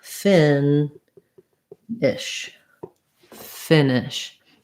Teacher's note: one is short so it sounds like fin ish finish so little almost no vowel there in that second syllable